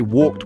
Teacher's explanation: In English we add ed to make the past tense, but the sound changes. We say walked with a T sound